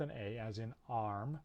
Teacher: low central unrounded vowel so it's different from ah in that it's central the tongue is a little bit further back it's not right at the front this sound is spelled in